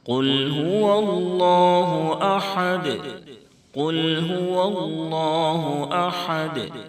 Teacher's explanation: قاف کو مکمل پر کریں گے یعنی موٹا کر کے پڑھیں گے، کیونکہ قاف حروف مستعلیہ کے ساتھ حرفوں میں سے ہے۔ · قاف کو جب لام سے ملائیں تو لام کی ادائیگی میں آواز بالکل نہیں لوٹے گی۔ قل، قل، اس طرح سے آواز کو لوٹا کر نہیں پڑھیں گے، کیونکہ لام حروف قلقلہ میں سے نہیں ہے۔